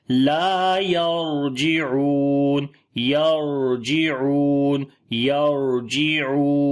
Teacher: را کے اوپر صفتے جو ہے وہ توسط بھی کریں گے، ہلکا سا آواز کو کنٹینیو کریں گے